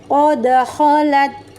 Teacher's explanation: dalnya ini dipantulkan dengan jelas dan ringan, kemudian pantulannya dilepas